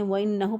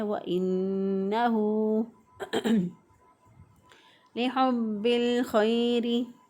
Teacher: الٹا پیش ہو کو ایک الف کے برابر لمبا کرنا ہے